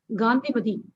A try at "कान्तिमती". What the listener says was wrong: Gandhi, who is that? It is Kantimati, not Gandhi. Don't make it Gandhi. It is not Gandhi. It has nothing to do with Gandhi. Kanti.